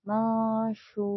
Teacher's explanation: r-nya masih dibaca tebal ya